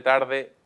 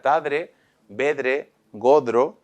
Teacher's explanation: es frecuente la metátesis entre vibrante y dental entonces en lugar de tarde lo normal es Que aparezca tadre